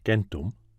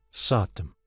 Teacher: The word for 100, gumtom, kept the k sound in Latin gentum, but changes to a sibilant s in Avestan satem